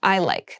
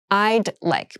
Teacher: make sure that you say I with that D sound this is the reduced form of I would like